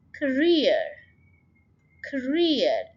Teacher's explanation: second syllable में stress करेंगे